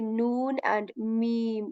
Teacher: make a nasal sound when we say noon and me you you feel a little vibration in your nose vibration or this humming sound in your nose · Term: nasal letters